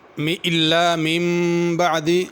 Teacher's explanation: نون کے اوپر میم لکھی ہوئی ہے تو میم پڑھنی ہے، من بعد غنہ بھی ہوگا